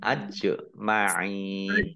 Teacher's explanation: jim sukun, bacaan kolkolah, ditampakkan kolkolahnya